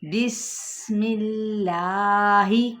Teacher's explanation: اللہ کے نام سے پہلے اگر زیر یعنی کسرہ آ جائے تو اسی لام کو ہم باریک ادا کریں گے